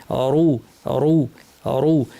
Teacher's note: অনেকে কাফিরুন বলেন, রুন না, রুন। আর রয়ের আওয়াজটাকে জিব্বা দিয়ে একটু উপর ঠেলবো, তাহলে ভারী হয়ে যাবে